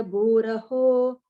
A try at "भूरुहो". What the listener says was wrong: I heard it as bhuraho அப்படின்னு கேட்டது.